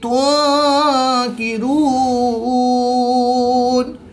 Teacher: نون ساکن کے بعد کاف حروف اخفا میں سے ہے تو یہاں پر اخفا ہوگا، یعنی غنہ زمانی کر کے پڑھیں گے۔ · واو ساکن سے پہلے را پر پیش تو واو مدہ، واو مدہ کے بعد نون کی زبر کو وقف کی حالت میں ساکن کریں گے تو یہاں پر وقف کی حالت میں مد عارض ہوگی، 2 سے 3 الف تک کھینچ کر پڑھیں گے۔